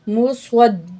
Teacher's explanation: मीम पेश मु, स्वा ज़बर दाल स्वद, स्वा ज़बर दाल स्वद, स्वाद को मोटा पढ़ेंगे, दाल तशदीद के साथ मिलाएंगे। मुस्वद, दाल ज़ेर दी, दाल के ऊपर तशदीद है, थोड़ा सा भारीपन होगा।